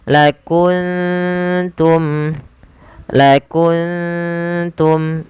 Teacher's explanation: Maka ini kita namakan dengan bacaan ikhfa. Maka cara membacanya samarkan suara nunnya ke huruf ta